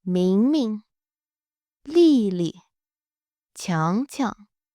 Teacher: Now for pronunciation with regular names, generally follow the same pattern as verbs. First syllable keeps its tone. Second becomes neutral.